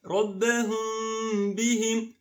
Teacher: It's a hidden Meem. The sound is Meem, but it's not completely clear. And Ba is clear with ghunnah, the nasal sound for 2 beats.